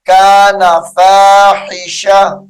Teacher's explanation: جب یہاں پر وقف کیا جائے گا، ٹھہرا جائے گا، تو اس کو فاحشۃن نہیں پڑھنا، فاحشہ پڑھیں گے